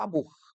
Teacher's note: a última sílaba é a sílaba tônica mas ela não tem acento